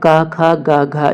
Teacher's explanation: का वर्ग का उच्चारण स्थान कंठ होता है। तो इसे भी ऐसे याद रख सकते हैं, का और का, कंठ में का है और का वर्ग में भी का है, तो इसका उच्चारण स्थान कंठ होगा।